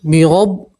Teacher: را کے اوپر زبر ہے تو را کو آپ پور پڑھیں گے، موٹا پڑھیں گے، ٹھیک ہے، اور با کو سیدھا آپ نون سے ملائیں گے، یہ الف اور لام نہیں پڑھیں گے، ٹھیک ہے۔